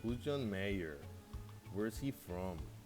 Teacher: There's a falling intonation in who's John Mayer and where is he from.